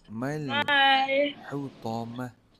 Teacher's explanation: Okay, yang ni bukan panjang tau. Alif tu kita tak baca panjang. Mal terus masuk dalam huruf lam.